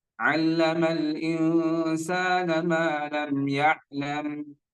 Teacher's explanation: jangan ditekan lama ya, atau jangan dibunyikan lama di ya'lamnya